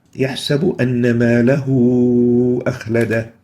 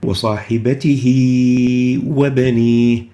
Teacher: So the dhamma on the ha here would be replaced with a waw vowel, and it will be extended as if there is a waw there. Now this extension ماله أخلده is longer than the extension in صاحبته وبنيه. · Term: greater connecting